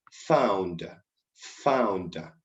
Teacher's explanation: F is a labiodental because it is occurring in the upper teeth and the lower lip. So you need to connect both, and you need to let the air pass through both articulators in order to get the sound.